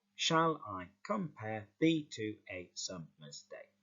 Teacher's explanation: And that Iambic Pentameter is where you have a unstressed syllable followed by a stressed syllable. And so when you hear it, you'll notice there's a slight emphasis on that second syllable.